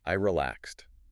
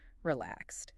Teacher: the ed on relaxed makes a sharp t sound